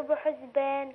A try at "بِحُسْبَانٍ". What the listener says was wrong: لا بحز لا بحس دي سين مش زي